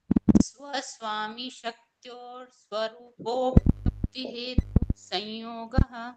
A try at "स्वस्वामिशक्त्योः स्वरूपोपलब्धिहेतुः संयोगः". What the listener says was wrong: आपको हर वर्ड पे रुकना पड़ेगा। देखो तीनों के पीछे विसर्ग लगा हुआ है। स्वस्वामी शक्त्योः स्वरूपोपलब्धि हेतु संयोगः।